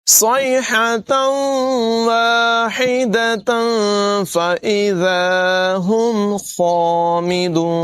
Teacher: اسی طرح تنوین کے بعد یہاں پر بھی فا حروف اخفا میں سے ہے، اخفا کریں گے یعنی غنہ کر کے پڑھیں گے۔ صاد کی آواز پر ہوگی، حا کی آواز نمایاں کریں گے